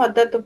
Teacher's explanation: घोष वर्ण को हम अघोष ध्वनि में परिवर्तित कर देते हैं। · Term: अघोषीकरण